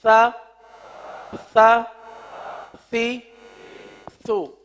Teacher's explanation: زبان کا سرا اوپر کے دانتوں کے اندرونی کنارے پر لگ کر نیچے آ رہا ہے